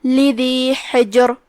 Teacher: کلمت حجر میں یہاں حرف الحا ہے، ہم اسے حلق کے درمیان والے حصے سے پڑھیں گے. پھر حرف الجیم ہے اور اس پہ جزم ہے، یہاں جیم کا حکم ہے قلقلہ تو ہم اسے ہلاتے ہوئے یہ کلمہ کو پڑھیں گے